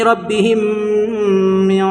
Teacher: میم کو میم سے ملا کر گنہ کے ساتھ پڑھیں گے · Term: ادغام شفوی